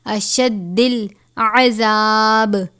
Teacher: دال کو سختی سے پڑھیں گے کیونکہ اس کے اوپر تشدید ہے